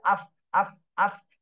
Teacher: উপরের দাঁতের আগা নিচের ঠোঁটের পেটের সাথে লেগে ফা উচ্চারণ হয়। তাহলে উপরের দাঁত নিচের ঠোঁটের পেটের সাথে লাগবে আ, আ যে আফ, আফ, আফ।